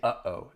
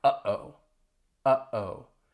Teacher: Hopefully you can feel that sound in your throat, because in between the uh-oh, that is a glottal stop.